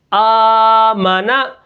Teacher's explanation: ہم نے میم کو بالکل نہیں کھینچنا، میم کے اوپر زبر ہے